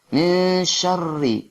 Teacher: huruf yang dibaca rangkap atau huruf yang dibaca seolah-olah kita membaca huruf itu dua kali. Huruf yang dibaca rangkap adalah huruf ra.